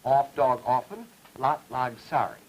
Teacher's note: say off, dog, often with aw vowels and lot, log, sorry with ah vowels. This is typical of the Central Atlantic seaboard.